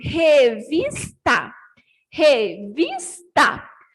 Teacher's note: a do meio é vis, então, ela é a penúltima sílaba, é a mais forte, então ela é paroxítona